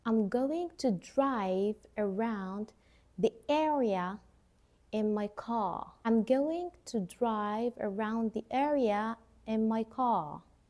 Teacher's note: we pronounce the R in the words like area, drive, because there is a vowel after the R, but the word car has no vowel after it